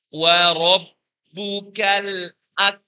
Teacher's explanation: Wa rabbuka, wanya tipis, ro-nya ditebalkan.